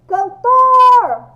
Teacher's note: A sílaba mais forte é o tor.